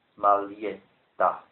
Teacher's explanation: because of the fact that it's double T, I have to lengthen the preceding vowel sound